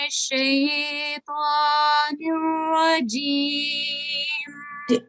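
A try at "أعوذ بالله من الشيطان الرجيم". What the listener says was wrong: اعوذ باللہ میں تھوڑا سا مجھے لگ رہا ہے جیسے لاف میں آواز گئی ہے. اعوذ عین کی آواز ذرا دوبارہ پڑھ لیجیے.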